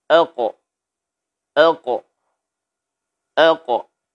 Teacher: Saat kita memantulkan huruf ini, ya, saat kita memantulkan huruf ini dalam keadaan sukun, terdengar oleh kita nabrah qawiyyah, yaitu tekanan ataupun bunyi pantulan yang kuat. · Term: qalqalahkan